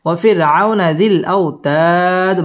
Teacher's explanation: আও জবরের বাম পাশে জজম ওয়ালা ওয়াও লিনের হরফ তাড়াতাড়ি পড়তে হবে ওয়াফির আউনা জিল আও জবরের বাম পাশে জজম ওয়ালা ওয়াও লিনের